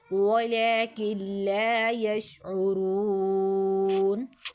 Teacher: نون ساکن کے بعد لام آ رہی ہے، نون کو نہیں پڑھنا ہے، ٹھیک ہے، کاف کو ڈائریکٹ لام کے ساتھ، کاف لام سے کل، ولیکن لا یشعرون۔